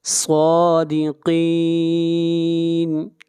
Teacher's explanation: صاد اور قاف یہ دونوں حروف مستعلیہ میں سے ہیں، یہاں پر دونوں کو موٹا پڑھا جائے گا